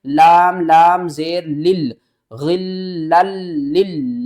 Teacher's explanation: لام کو دوسرے لام کے ساتھ ملائیں گے، پھر سختی کریں گے